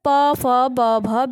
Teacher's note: यानी कि ये ओष्ठ से कहे जाते हैं, तो इनको ओष्ठ व्यंजन कहते हैं